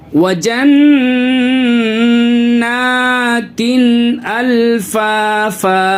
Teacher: अब देखिए यहाँ नून के ऊपर तशदीद है, इसकी वजह से नाक में आवाज़ गुन्ना करेंगे, नाक में आवाज़ को रोकेंगे